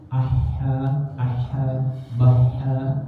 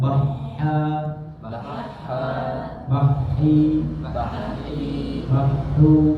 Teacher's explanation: Sekarang ha kecil, ya, ha kecil dari tengah tenggorokan.